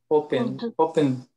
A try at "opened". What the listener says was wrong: It's opened. With D.